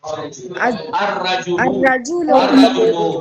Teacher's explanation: تو یہ دو را نہیں ہے. ایک لام ایک را ہے. لام کو را میں ادغام کیا ہے. الرجل. یا ابھی مثال دی تھی الشمس.